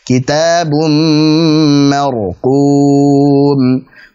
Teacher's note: Tebalkan huruf 'r', haluskan takrir (getaran). 'Mar', dan biarkan mengalir sedikit karena itu tawasut.